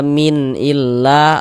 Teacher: la dibaca panjang, mad tabi'i panjangnya 2 harokat